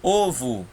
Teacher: Ovo termina com O, mas tem som de U.